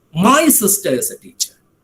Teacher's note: in the first occasion my emphasis was on the word my